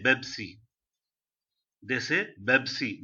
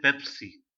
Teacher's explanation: Pa is not there in Arabic, so that's the reason they say Bebsi